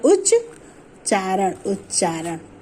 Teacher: ता का मेल चा से होने पर ता हमारा चा में परिवर्तित हो जाता है। जैसे उच्चारण, उत में ता का मेल हो रहा है चा से, ये ता हमारा चा में परिवर्तित हो जाएगा तो कि चा हमारा खुद स्वरहीन है इसलिए चा ये हमारा स्वरहीन होगा और ये आधा चा हो जाएगा, तो उत ये हो जाएगा उच्चारण, उच्चारण।